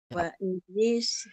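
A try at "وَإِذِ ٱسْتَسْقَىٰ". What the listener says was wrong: Dia tak nak wa idhis. Jangan lambat-lambat macam tu. Dia cergas sikit bacaan dia macam tu.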